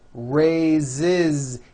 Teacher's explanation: even though it is spelled with an S it's pronounced with a voiced Z